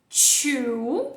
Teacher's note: é como o t do português só que ele tem um arzinho ele saindo na frente